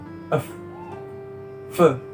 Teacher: Letak artikulasinya ialah pada labiodental, yang mana dengan cara mempertemukan gigi atas sebagai titik artikulasi dan bibir bawah sebagai artikulator. Proses artikulasinya ialah artikulasi reaktif, yaitu dihasilkan dengan cara menggesekkan udara yang keluar dari paru-paru.